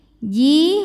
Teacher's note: dua harakat [Musik] yufajjirunaha tafji Ji hukumnya adalah Mad Thobi'i dahohiri sebab ada Ya Sukun didahului harakat kasrah cara bacanya jimnya panjang dua harakat